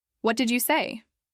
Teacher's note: With a falling intonation could sound more like a statement or a complaint